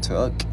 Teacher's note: Chữ K thì mình bật cái hơi ra